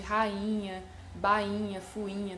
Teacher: NH, que é um fonema nasal, ele, obviamente, ele vai nasalizar a vogal que vem antes dele, no caso aí do I de rainha, né?